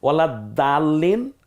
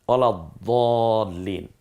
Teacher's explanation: দালটা বলার সময় একটু পাতলা হবে, উচ্চারণটা হালকা হবে, দটা বলার সময় মুখটা একটু গলাবে। ওয়ালা দালিন, ওয়ালা দলিন, আপনি এই দুইটা পার্থক্য করতে পারলে দ্যাটস এনাফ।